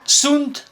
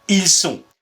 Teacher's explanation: la nasalisation consiste à passer du son un au son on